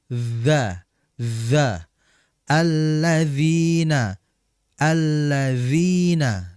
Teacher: huruf dzal ini ujung lidah berjumpa atau bertemu dengan ujung gigi seri atas.